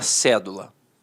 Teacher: a palavra cédula notoriamente é uma proparoxítona a sílaba tônica está na antepenúltima sílaba